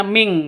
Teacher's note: nun mati bertemu dengan Q samar didengungkan siap-siap ke huruf qnya non matinya ditambah dengan ng